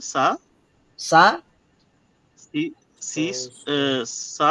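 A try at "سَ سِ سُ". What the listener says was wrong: সা কেন হবে ভাইয়া? সা হবে না তো, স স এই যে বলেছিলাম যে সি স সি স সু সি স সু সি স সু হ্যাঁ সি স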